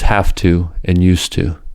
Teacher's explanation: The voiced V and Z in have to and used to, respectively, are followed by a voiceless consonant ta. In this situation, V and Z become voiceless f and s.